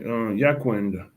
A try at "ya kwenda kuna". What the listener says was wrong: Be careful. The key issue, the key, your key thing, how to put it, is your tone on ya. Ya, yes, ya kwenda kuna, yeah. Yeah, ya kwenda kuna. Ya kwenda kuna.